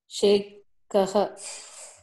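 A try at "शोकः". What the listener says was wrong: Not Shekaha. It is not she. Shokaha. Means you have to practice the consonant vowel combination more. So you need to know the consonant vowel combination, then only you can read these words.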